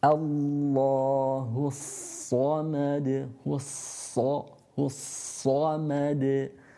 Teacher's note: the sad here has got a shadda again, so you're pronouncing two sads, the first of which has a sukoon, so our lips go back